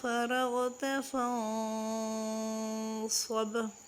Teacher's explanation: افا ہوگا نون پر اور صاد کا مخرج پر کر کے ادا کریں گے اور با پر کلکلا ہوگا